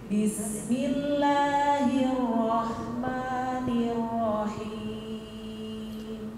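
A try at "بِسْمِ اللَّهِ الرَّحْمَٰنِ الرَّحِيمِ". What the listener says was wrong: tebalkan dikit lagi rnya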